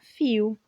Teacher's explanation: esse dialeto possui adaptações de fonemas no dígrafo LH que são pronunciadas com som de i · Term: dialeto caipira